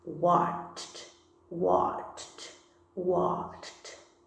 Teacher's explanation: cordas vocais não vibram. Então, a gente coloca um Tzinho aí.